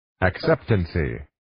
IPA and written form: æk'septənsiː (Acceptancy)